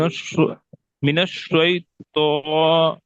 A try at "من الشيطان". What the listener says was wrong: तो आपका जो है कैफियत है शै तो नहीं, बल्कि पूरा मुंह खोलिए। मिनश शै मिनश।